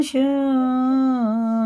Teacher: یہ مد متصل ہے، 4 الف کے برابر کھینچیں گے